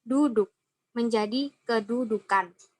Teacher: fonem glotal akan berubah menjadi fonem K akibat bertemu dengan morfem ke-an